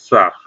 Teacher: सपेरा वाला जो सा होता है, इसका भी उच्चारण स्थान दंत होता है।